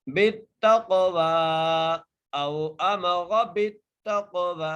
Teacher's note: تا کو قاف سے ملانا ہے اور قاف پر قلقلہ کرنا ہے، قاف کو موٹا کر کے پڑھنا ہے